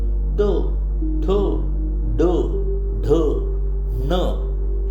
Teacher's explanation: त ठ ड ढ न हे टाळूला चिटकणारे तालव्य वर्ण आहेत